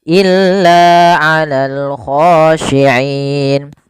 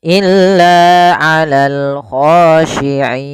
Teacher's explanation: kita boleh memanjangkan dua harakat, boleh pula empat harakat dan boleh pula enam harakat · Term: mad arid sukun, mad arid lis sukun